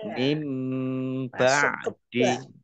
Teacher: nun sukun bertemu dengan huruf ba bacaan iqlab dibaca membalik nunnya dibaca mim